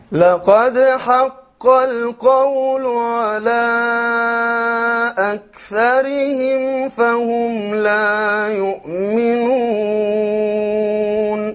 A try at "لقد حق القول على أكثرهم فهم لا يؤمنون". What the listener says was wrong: Okay, we forgot the را in أكثرهم will be light.